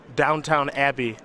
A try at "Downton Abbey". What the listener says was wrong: It's Downton. There's no W.